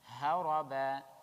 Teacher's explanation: وَلَن نُعْجِزَهُ, again nun mushaddad غنة, هَرَبًا, ha from the depth of the throat and ra is heavy